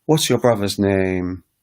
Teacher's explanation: So the intonation goes down in asking a question. So when you speak to somebody from Ghana or one of those countries that have the Niger Congo type languages, the questions drop down.